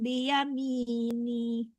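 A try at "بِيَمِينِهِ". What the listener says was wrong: Jangan panjang nih-nya ya. Tidak panjang mi, yang panjang nih-nya jangan ya.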